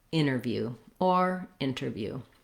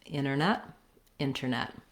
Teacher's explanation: We have first syllable stress. Our T is optional. We have an unstressed and then it's just like the word net, which has the or red tent vowel.